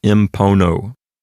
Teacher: the letter N turns into an M before the letter P because the letter M is made with the lips, just like the letter P is. So it aids in pronunciation, and you get impono.